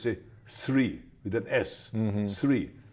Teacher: the Germans always say three with an S